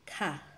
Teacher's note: Ito naman ang tunog niya ay parang k na may hangin